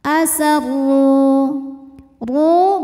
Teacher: huruf ro dibunyikan secara tafkhim karena berharakat damah maka ro dibunyikan dengan tebal